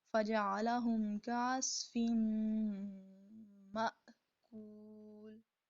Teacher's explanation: اس کی ادائیگی کرتے وقت اس کی ادائیگی میں جھٹکا آتا ہے. حمزہ کو جھٹکے کے ساتھ ادا کیا جاتا ہے